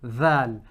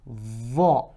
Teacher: Val is a flat letter and Va is a rounded, full letter.